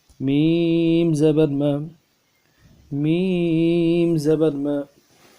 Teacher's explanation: میم کو کھینچے گے تین الف کی مقدار میں، آخر میں میم ساکنہ غنہ کریں گے، اور جو زبر پڑھ رہے ہیں اس زبر میں منہ اوپر کی طرف کھلے گا، اس کو کھینچیں گے نہیں زبر کو، اور نہ جھٹکا دیں گے۔